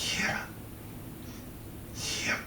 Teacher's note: Pulmonic ingressive voiceless alveolar glide and mid-central vowel with optional unreleased final bilabial stop.